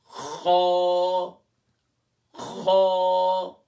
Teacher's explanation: خا کہاں سے ادا ہوگا؟ ٹاپ آف دا تھروٹ، یعنی کہ ادنائے حلق سے ادا ہوگا